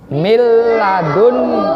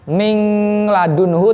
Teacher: Idgham bila gunnah yaitu setiap ada nun sukun atau tanwin bertemu dengan huruf lam dan ro. Jadi bila gunnah sesuai dengan namanya, dia membacanya tidak dengan gunnah, tidak dengan dengung ya.